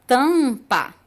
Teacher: O M modificou o som do A, mas só dá para ouvir o A. Tampa. É como se tivesse um acento um acento tio em cima do A, tá? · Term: dígrafo vocálico